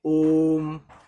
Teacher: प्लुत स्वर को बोलने में हस स्वर से तीन गुना समय लगता है